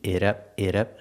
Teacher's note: the T in it is a fast D